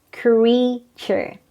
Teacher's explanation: there are only two syllables the stress is on the first